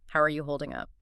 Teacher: Draw out the word holding just a millisecond longer to show you actually have time to listen.